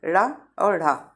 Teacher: इनके उच्चारण में जीभ की नोक झटके से तालु को छूकर वापस आती है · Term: उत्क्षिप्त व्यंजन